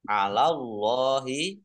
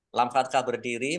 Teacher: Allahnya dibaca tebal karena harokat di depannya fathah